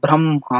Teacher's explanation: ಬ್ರಹ್ಮ ಅನ್ನೋದಕ್ಕೆ ಹೆಚ್ಚು ಉಸಿರು ಬೇಕಾಗ್ತಾ ಹೋಗುತ್ತೆ. ನೋಡಿ, ಆದಿಯಲ್ಲೇ ನಮ್ಗೆ ವ್ಯಂಜನಾಕ್ಷರ ಬಂದಿದೆ, ಆ ವ್ಯಂಜನಾಕ್ಷರ ಬಂದಿದ್ರು ಅದಕ್ಕೆ ಬೇರೆ ಒತ್ತಕ್ಷರಗಳು ಅಲ್ಲಿ ಇಲ್ಲ.